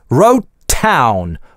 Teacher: Wrote - гортанная смычка, а дальше town. /t/ с аспирацией.